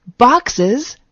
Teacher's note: And any time an ES is added to make a plural word like boxes, for example, the S is always pronounced as a Z sound